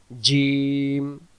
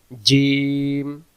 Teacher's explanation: জিম অক্ষর জিহ্বার মাঝখান থেকে শক্ত করে পড়তে হয়